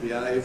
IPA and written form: bɪˈeɪv (behave)